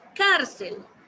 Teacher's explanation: La sílaba más fuerte es car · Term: sílaba tónica